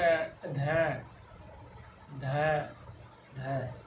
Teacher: ये अल्प प्राण नहीं है, तो इसमें ध में जो श्वास वायु वो अधिक मात्रा में निकल रही है, तो ये महाप्राण की श्रेणी में शामिल किया है।